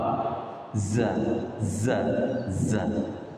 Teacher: Itlaq atau infitah. Infitah. Berarti tidak tebal.